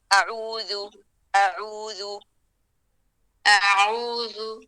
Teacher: حمزہ عین واو ذال سارے حروف باریک ہیں. آواز کو نرم رکھیں اور زبان کا آخری سے نیچے ہی رکھیں.